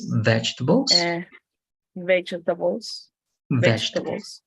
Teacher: the the the the vowels in the middle can disappear